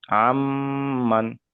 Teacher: তাই নুন সাকিনকে মিমের সাথে মিলিয়ে একালি পরিমাণ গুণনা করে পড়তে হবে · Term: ইদগামে নাকিস